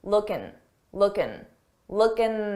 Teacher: it's very common to take a word that ends in i n g and drop the G sound that g sound and just end it on N looking looking